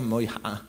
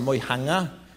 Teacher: Moiha'a avec une glottale, c'est autrefois Moihanga avec un nge, le même que Ingoa, mais voyez qu'ici on a quelques variétés du Paumotu qui ont perdu le nge.